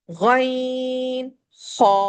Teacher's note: हमारा हलक बंद होगा। गन में ग की गरगरे की आवाज है। ख में खर्राटे की आवाज है।